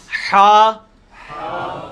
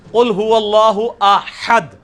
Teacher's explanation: حلوائی والا جو ہا ہے, یہ وسط حلق سے یعنی حلق کے درمیان سے نکلتا ہے. یہ کبھی آپ وہ گلے والی ٹافی کھائیں نا, وہ والی آواز ایکزیکٹ بالکل کلیئر وہاں سے جو نکلتی ہے نا, یہ ہا کا مخرج وہی ہے.